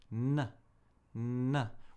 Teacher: We take the tip of our tongue and we make contact n, n, with the alveolar ridge behind the upper teeth. N, n. We build up a little sound and then we release it.